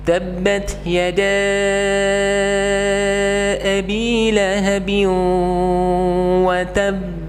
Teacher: Nah, seperti ayat kedua daripada surat Al-Lahab tersebut. Tapi yang benar adalah ditahan terlebih dahulu baru kemudian dipantulkan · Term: qalqalah akbar